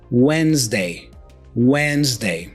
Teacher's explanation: What usually happens here is we don't pronounce the D. So we say when, and then we make a Z sound right after.